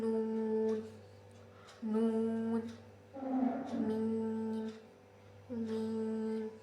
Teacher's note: ناک پر جو آواز رکھ کر ہم تھوڑی دیر روک کر پڑھتے ہیں اسے کہتے ہیں غنہ، جیسے کہ نون نون، میم میم، یہ جو ہے غنہ سے ادا ہوگا، ٹھیک ہے، ٹھیک ہے۔